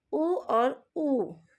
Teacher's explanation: जब हम उ और ऊ का उच्चारण करते हैं तो इसका स्थान ओष्ठ के पास होता है। इसके उच्चारण में होठों का उपयोग ज़्यादा होता है। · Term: ओष्ठ स्वर